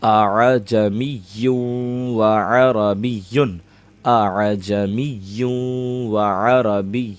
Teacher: ہم نرمی اس طرح کریں گے کہ حمزہ اور عین کی آواز مل جائے گی آپس میں · حمزہ عین زبر آ، اس کے اندر اس طرح کرنا ہے کہ حمزہ کی آواز عین کی آواز میں مل جائے اور عین کی آواز زیادہ غالب رہے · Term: تسہیل